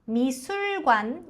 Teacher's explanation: まず真ん中のすの母音はうなので、口を前にぐーっと突き出してすです。 ミスルではなくミスル。관에は連音化させて관에と発音します。美術館に行ったりもします。가기도▁해요.▁푹▁쉬고▁싶을▁때는▁집에서▁맛있는▁걸▁먹으면서▁드라마를▁봐요.▁푹▁쉬다,▁ゆっくり休む、ゆっくりするという意味です。푹▁쉬고▁싶을▁때는休みたいときは家で맛있는▁거というと美味しいものという意味です。있는のところ、三子音の後に二音が来るときはこのパッチム、子が2個あるこのパッチムは二音に変わります。なので下を歯の裏に強く当てて発音します。마시는ではなく맛있는になります。맛있는▁것을の縮約形걸